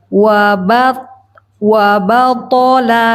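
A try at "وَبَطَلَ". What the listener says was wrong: Wa-nya barusan tebal.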